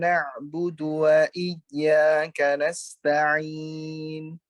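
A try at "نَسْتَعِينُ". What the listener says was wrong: Jadi pada saat masuk ke guna baru monyong. Jangan berbarengan ya. Jangan bareng-bareng tapi nasta'in baru monyong.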